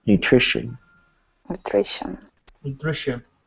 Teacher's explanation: the ti kind of makes like an sh sound